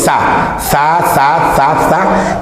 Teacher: yo digo sa sa sa sa sa y la lengua se va al alveolo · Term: alveolares